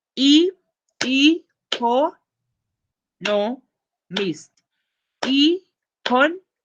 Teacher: There are 4 syllables in economist with the stress on the second syllable con